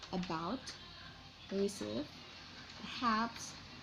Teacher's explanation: the final syllable is stress in about, receive, perhaps